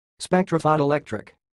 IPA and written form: ˌspɛk.trəʊ.ˌfəʊ.toʊ.ɪ.ˈlɛk.trɪk (spectrophotoelectric)